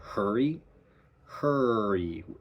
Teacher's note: The whole length of the vowel is colored by the R.